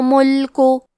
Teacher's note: کلمت ملکوں میں لام ساکن کو ظاہر کرنا ہے، آخری میں کاف پہ پیش ہے لہذا ہم پیش کو ظاہر کریں گے